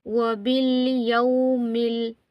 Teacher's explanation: واو ساکن سے پہلے زبر ہو تو واو لین ہوتا ہے، ہم نے یا کو جلدی پڑھنا ہے۔